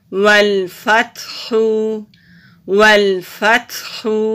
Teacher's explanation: تا ساکن ہے تو تا پہ ہمس ہوگا، سانس جاری رہے گی. اور خا حروف حلقی ہے تو حلق سے نکالتے ہوئے پڑھیں گے.